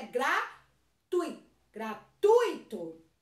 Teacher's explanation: Não gratuito. O mais forte é o u e não o i.